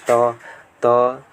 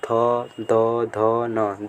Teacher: त बोलेंगे तो देखिए दांत में जीभ लड़ेगा, त। फिर उसके बाद थ, द, ध, न, दांत में जाके लड़ रहा है तो ये कहाँ पाएगा, दांत में आ जाएगा। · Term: त वर्ग